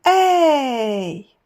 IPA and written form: eı (Аа)